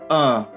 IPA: ɜ: